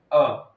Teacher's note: मध्य स्वर एक मात्र है अ जिसमें हमारी जबान कहां रहेगी बीच में रहेगी कहां रहेगी बीच में रहेगी उसको मध्य स्वर कहा जाता है